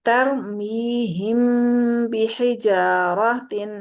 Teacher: ناک میں آواز کو 2 حرکت جتنا روک کے رکھیں گے تو وہ اخفا ہوگا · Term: اخفائے شفوی